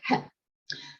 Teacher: ki was a k sound with a little puff of air